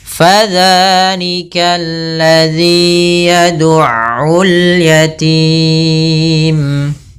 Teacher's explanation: jangan sampai Pa dengan P tapi dia Fa aliran nafasnya mengalir